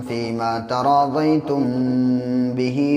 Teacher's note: वला जुनाह अलैकुम फ़ीमा तराज़यतुम बिही मिन बअदिल फ़रीज़ह। तराज़यतुम मीम के बाद बा है, इसलिए नाक में आवाज़ को ठहराएंगे। जब मीम साकिन के बाद बा आता है तो नाक में आवाज़ ठहरती है।